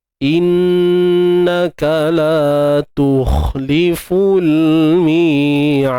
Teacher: Untuk dal kat sini qalqalah kubra, ada lantunan besar kat ujung tu